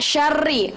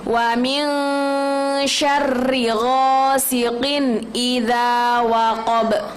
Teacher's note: syarri, ri-nya tuh pendek, nggak boleh kita panjangkan